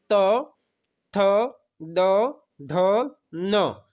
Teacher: दांत को स्पर्श करके बोले जाने वाले वर्ण हैं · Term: दंतय